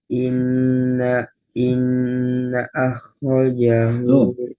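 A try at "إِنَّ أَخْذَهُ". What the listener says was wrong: Oh, masih ada khoknya? Nggak ada khoknya, Mas. Inna akhdahu. Nggak ada khoknya. akhdahu. Kok ada khoknya lagi? Nggak ada khoknya. Kok ada khoknya? Nggak ada khoknya. Khoknya kan sudah disukun. Inna akhdahu.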